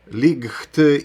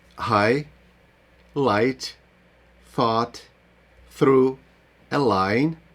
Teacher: Якщо GH стоїть після голосної літери, вона взагалі не вимовляється взагалі. Забудьте, що вона там є.